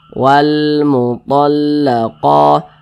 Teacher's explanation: qa dibaca panjang. Ini namanya adalah mad tabi'i.